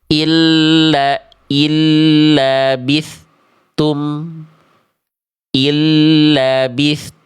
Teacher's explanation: bunyi tsa dan kepada huruf ta-nya seperti ada jarak atau jeda hening. Seharusnya tak boleh. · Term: terputus suara dan nafasnya